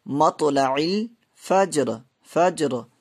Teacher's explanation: اور یہاں پہ را جو ہے پر ہوگی رکنے کی صورت میں، کیونکہ را ساکن، را ساکن ساکن، را ساکن ہے اور اس سے پہلا حرف بھی ساکن ہے اور اس سے پہلے زبر ہے، اس لیے را جو ہے یہاں پہ پر ہوگی، را کو موٹا پڑھیں گے